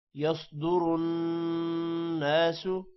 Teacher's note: صاد موٹا ہوگا اور را بھی موٹا ہوگا جبکہ نون پر غنہ ہوگا